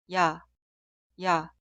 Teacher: Se clasifica como vocal simple, pero fonéticamente es una vocal doble. El sonido inicial es I, E, instantáneamente termina con A. Cuidado, suena como un solo sonido, no dos sonidos separados.